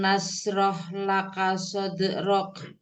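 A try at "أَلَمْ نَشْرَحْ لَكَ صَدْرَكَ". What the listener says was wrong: Waktu pengucapan dal sukun, Umi jangan sampai sode gitu ya. Umi tidak boleh mengakhirinya dengan dengan huruf hamzah. Sode. Jadi Umi bacanya sode ya. Soderok.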